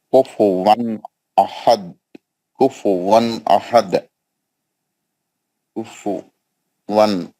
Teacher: تنوین کا اظہار حلقی حروف حمزہ، آخری میں قلقلہ ہوگا